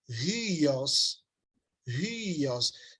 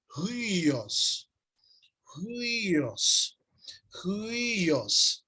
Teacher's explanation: Você começa a pronunciar com som de U e já vai para o I, pronuncia o I de novo e vai para o os.